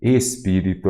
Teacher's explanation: então a antepenúltima sílaba é a tônica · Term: proparoxítona